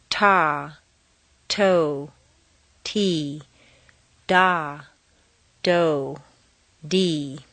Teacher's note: a puff of air comes out over the tip of the tongue the tongue is somewhat tense